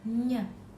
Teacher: seperti er e&r Hai itu menghasilkan getaran Hai kemudian yang keempat dihasilkan di tengah lidah dan langit-langit keras